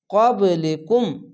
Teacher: কফ নুন সাকিনের পাশে কফ তার জন্য ইফা আছে কলিকুম এখানে কলকলা ধাক্কা মেরে নিচে সাউন্ড আসবে